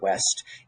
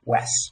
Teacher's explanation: realizing a word like west as wes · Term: consonant cluster reduction